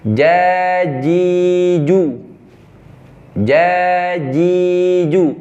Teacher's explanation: jangan ambil ujung lidah kadang ada beberapa teman-teman kita pakai ujung lidah jadi ada suara tambahan seperti C jadi cacicu itu dihindari harus pakai Tengah seperti huruf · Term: huruf Jim